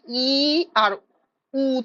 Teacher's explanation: ঠোট সবথেকে কম খুলছে ই আর উ তে এই দুই জায়গায় সব থেকে কম খুলছে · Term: সংবৃদ্ধ